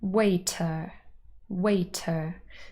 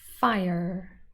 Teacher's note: So we've got the schwa, but almost a bit of a r sound as well.